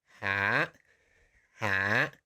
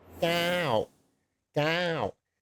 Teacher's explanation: way up high, down to low, from very high to very low, and very quickly. So yeah, you think about it like you're going on the roller coaster. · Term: falling tone